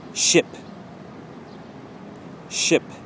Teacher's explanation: your teeth are closed together and you're basically blowing out air between your teeth